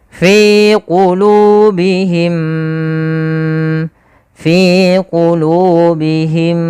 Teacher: cara membacanya adalah kita tahan dulu suara mimnya yang pertama masukkan kedua dan ditahan